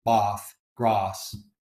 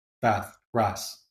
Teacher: you will hear that low back vowel, bath, grass. In the North, it's a low front vowel, bath, grass.